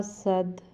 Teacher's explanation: دال چونکہ حروف قلقلہ میں سے ساکن کریں گے تو اس کو تھوڑا سا قلقلہ کریں گے، یعنی ہلائیں گے